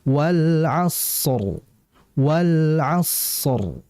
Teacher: shad sin dua huruf yang sifatnya sama yaitu hames dan rikhawah sama-sama mengalir